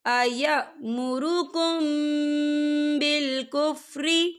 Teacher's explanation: أَرْبَابًا أَيَأْمُرُكُمْ بِالْكُفْرِ، یا دیکھیں أَيَأْمُرُكُمْ یہاں میم ساکن ہے، میم ساکن کے بعد جو ہے با آ رہا ہے، تو یہاں پر اکفا شفوی ہوگا اور ہم یہاں غنّہ بھی کریں گے